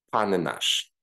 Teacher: because one N belongs to the first word and the other one belongs to the second word, we need to rearticulate them and pronounce these two words as panenash.